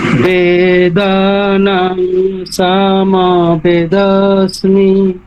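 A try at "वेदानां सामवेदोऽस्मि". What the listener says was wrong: হলো না ঠিক আছে দেখুন দীর্ঘ যেগুলো সেগুলোকে টানতে বেদ দুটোই দীর্ঘ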